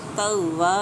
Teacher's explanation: ہوت توا، ہوت، تا کو شدت سے ادا کریں گے شد کی وجہ سے۔ توا، واؤ کو بھی شد کی وجہ سے شدت سے ادا کیا جائے گا۔ الف مدہ اپلائی ہو رہی ہے تو 1 سے 2 حرکات کھینچ کے پڑھیں گے۔